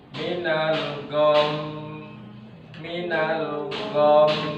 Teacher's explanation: hurufnya adalah huruf gunah maka dia harus didengungkan dengan cara ditahan Minal minalom tidak boleh buru-buru Minal gom enggak boleh dan enggak